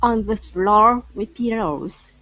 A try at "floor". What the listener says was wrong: Okay, now instead of saying flaw, it's flow. Go to an O sound first. So floor, floor, floor with pillows.